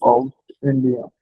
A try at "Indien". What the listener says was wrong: Indian. We will not say India, we'll say Indian. to German language, we'll say it as Indian.